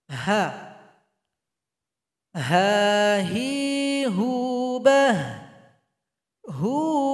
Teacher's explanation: Di mana keluarnya itu tenggorokan paling bawah jadi bunyi hurufnya seperti orang mengeluh ha ha ada bunyi Hamas nafas yang mengalir ketika membacanya ha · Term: huruf H